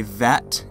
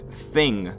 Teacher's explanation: One th is voiced and the other isn't some English dialects and a lot of other languages use the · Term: th sounds